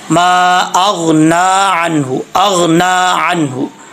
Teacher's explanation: नून के ऊपर जो खड़ा ज़बर है इसको अच्छे तरीके से पढ़ेंगे। इसको जितना लंबा किया जाता है यानी एक अलिफ़ की मकदार लंबा किया जाता है, इसको एक अलिफ़ की मकदार लंबा करेंगे।